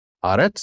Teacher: So the emphasis is on that first syllable. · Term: accent